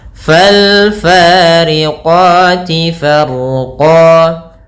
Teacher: Kemudian pada lafal fa, di sini ada mad tabi'i, yaitu fathah bertemu alif panjangnya 2 harokat. Qati, ada mad tabi'i lagi, fathah bertemu alif 2 harokat.